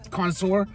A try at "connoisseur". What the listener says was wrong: Connoisseur. Not a connoisseur like a dinosaur.